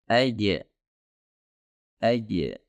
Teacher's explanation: sekali bunyi tersebut dikeluarkan, maka Anda tidak dapat mengalirkan suara ataupun tidak dapat melanjutkan huruf jim tersebut